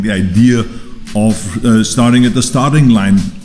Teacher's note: The idea, stressing idea, of starting, stressing starting, reducing the of, and then repeating the starting with more stress on starting again. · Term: stresses and reductions